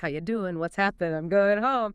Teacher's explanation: It's a shift from a velar nasal to an alveolar nasal N.